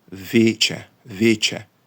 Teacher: його читали як вузький і тобто не широкий е який ми зараз маємо в українській мові